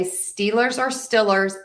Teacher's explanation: many people in Pittsburgh will actually say the Pittsburgh Steelers with that short I sound.